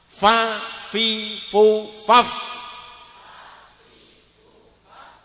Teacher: Bibir bawah bagian dalam itu karena kalau kita rapatkan itu tidak kelihatan. Lah itu ditempelkan pada ujung gigi atas.